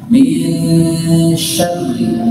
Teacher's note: nun ketemu sin ikhfa, tahan tidak tergesa-gesa, ada gunnah